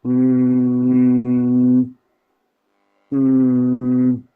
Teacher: huruf yang ee memang pengucapannya pun sengaw dengan sendirinya huruf nun itu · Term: huruf hidung